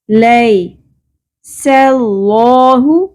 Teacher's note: لفظ اللہ کا لام یہاں پر پر ہوگا کیونکہ اس سے پہلے زبر آ رہی ہے. سلہ، لیکن سین کو پر نہیں کرنا.